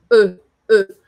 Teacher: A letra E, em francês, ela tem esse som mais fechado